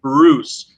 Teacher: So you just drop out the Y and it's Bruce. So the U becomes oo, which is as close as you can get to the long U sound in that word.